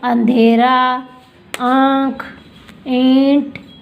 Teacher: अनुनासिक स्वर है वो नाक और मुख दोनों से बोले जाते हैं